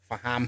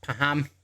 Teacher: the F sound in Arabic becomes a P in Malay or Indonesia quite often